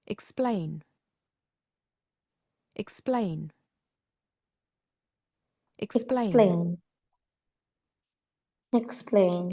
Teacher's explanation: Correct answer is the stress is on the second syllable.